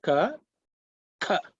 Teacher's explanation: one is called unaspirated. That means you don't push too much air. The second one is pronounced with a puff of air.